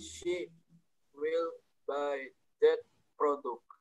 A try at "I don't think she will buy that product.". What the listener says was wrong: Yes, product. Thank you ya.